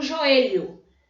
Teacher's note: Eu leio joelho como se o O fosse um U, mas é O no final.